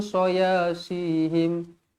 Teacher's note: huruf sad tebal si walaupun berbaris bawah tetap sifat dia tebal